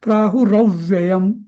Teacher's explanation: प्राहुरव्ययम असं म्हणजे थोडासा आघात देऊन म्हणायचा